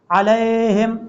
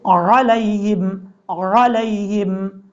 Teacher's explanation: لام کے بعد جو یا ہے اس کو لمبا نہیں کرنا